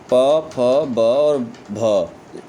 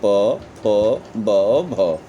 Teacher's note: ठीक, प, फ, ब और भ, इसका उच्चारण जो होता है वो ओष्ठ से होता है।